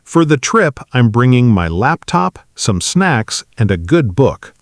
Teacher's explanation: with that natural rise, rise, fall rhythm across the list.